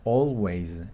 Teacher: Cada vez que tenga la A y la L, por ejemplo, always, always va a ser esta O, que es una O larga, la lengua va hacia atrás, los labios se redondean